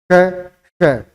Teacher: जिह्वा तालु के पास अंदर के साइड में जाएगी, उसको छुएगी नहीं, किंतु जो इन दोनों के मध्य से जो ध्वनि निकलेगी वो रगड़ खाते हुए ध्वनि निकलेगी। और रगड़ खाते हुए निकलेगी तो हल्की एक सी किसी आवाज आएगी और इसमें जिह्वा क्या अंदर के साइड में इस तरह से घूम जाती है। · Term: ऊष्म व्यंजन